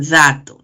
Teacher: T y D, entonces hemos repasado por el punto de articulación, son dentales y además oclusivas por el modo.